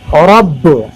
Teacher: با پر تشدید ہے اس لیے ڈبل